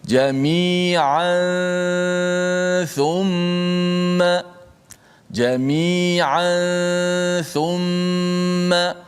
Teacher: Bertemu dengan tha, maka dia menjadi hukum ikhfa hakiki. Kita dengungkan dia dan kita sembunyikan makhraj nun mati pada tanwin tersebut.